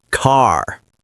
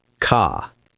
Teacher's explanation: Americans pronounce the R strongly. British speakers often drop it. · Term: The R sound